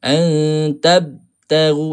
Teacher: Ha huruf ba kena qalqalahkan. Jangan putuslah qalqalah dia tu. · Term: qalqalah sughra